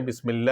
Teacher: لفظ اللہ کے لام سے پہلے میم ہے اور اس سے پہلے اور اس پہ زیر ہے، تو لام سے پہلے زیر آ گیا تو اس لفظ اللہ کے لام کو باریک پڑھیں گے، اور اس باریک پڑھنے کو ترقیق کہتے ہیں۔